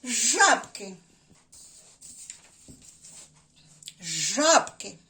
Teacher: правильно на першому складі жаб на звуки а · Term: наголос